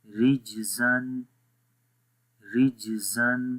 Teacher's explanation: را جیم زیر رج، زاد و زبر زن، رجزن، رجزن. تو یہاں پر بھی جو قلقلہ ہے جیم کے اوپر وہ ویک قلقلہ ہے، کمزور قلقلہ ہے، سخت نہیں ہے، ٹھیک ہے. کیونکہ جب قلقلہ والے حروف کسی ورڈ کے بیچ میں آ جائیں، درمیان میں آ جائیں، تو وہاں پر قلقلہ ویک ہو جاتا ہے.